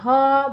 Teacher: বায়ু কন্ঠনালী হয়ে সরাসরি বের হয়ে আসে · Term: কন্ঠনালী ও ব্যঞ্জন